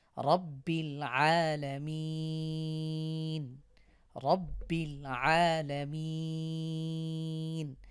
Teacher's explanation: লা মিম ইয়া জের মি আলামিন নুন জবর না রব্বিল আলামিন না শেষে ওয়াকফ করবো এ কারণে শেষে কিন্তু তিন আলিফ টেনে পড়বো আমরা